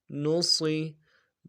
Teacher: نون پیش نو، صاد زیر صی، موٹا حرف ہے، موٹا کرنا ہے صاد کو، سیٹی موٹی ہوگی، صاد زیر صی، نصی۔